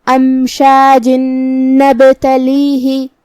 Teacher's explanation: ہمیں یہ تنوین کو نون میں ملا کے غنہ اور تشدید کے ساتھ یہ حکم کو ادا کرنا ہے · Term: ادغام بغنہ